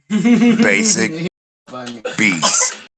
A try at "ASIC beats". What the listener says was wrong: Without the B. No, ASIC beats.